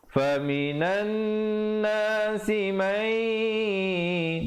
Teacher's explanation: didengungkan 2 harakat, idgham bi gunnah. Asalnya man yaqulu, jadi baca mai 2 harakat.